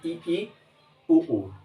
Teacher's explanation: संवृत्त शब्द से यह स्पष्ट है कि क्या हो रहा है, मतलब संकुचन हो रहा है। संवृत्त, मुख का लगभग बंद होना, ये संवृत्त वर्णों की श्रेणी में आता है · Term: संवृत्त स्वर